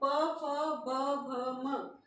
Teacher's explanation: होंठ स्पर्श हो रहे हैं आपस में, तो ये हो जाएंगे ओष्ठ।